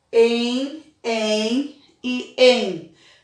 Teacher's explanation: Tem o som nasal da vogal E, que é o EN. EN, EN e EN.